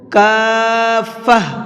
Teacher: گولتا پر وقف کرتے ہیں تو گولتا ہا بن جاتی ہے، اسی وجہ سے میں نے اس کو کافہ پڑھا ہے، ٹھیک ہے۔